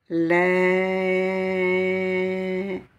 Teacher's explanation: la voyelle E longue que je vais prolonger de 4 à 6 fois